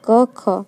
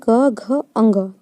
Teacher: जिसमें कंपन हो वो घोष या सघोष